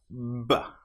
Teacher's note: Lips together build up pressure behind. With the B sound, we build up pressure with the vocal cords.